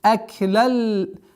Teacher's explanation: Здесь применяем ассимиляцию, идгам, без назализации.